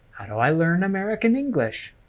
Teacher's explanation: note that I stress the words learn American English